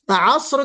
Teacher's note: अस्र कहते वक्त जुम्बिश नहीं बल्कि सीटी बजेगी